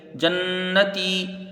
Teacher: جیم کو نون سے ملا کے پڑھا جائے گا، نون مشدد ہے، ایک الف مقدار غنہ ہوگا